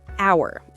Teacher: The H in hour is silent. So, when you say it out loud, the word actually starts with an sound like a vowel. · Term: silent H